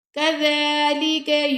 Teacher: یہ دونوں کاف جو آ رہے ہیں نا فرسٹ میں اور لاسٹ میں كذلك کے دونوں کو باریک پڑھنا ہے، موٹا نہیں پڑھنا